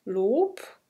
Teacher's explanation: im Wort Lob wird b als p ausgesprochen